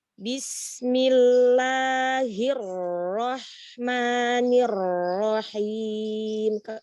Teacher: coba jangan tinggi nadanya, samain aja